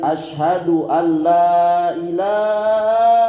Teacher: berlebih-lebihan dalam memanjangkan lam pada kata ilah